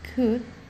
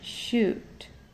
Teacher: In high back, we have short U as in could, and long U as in shoot.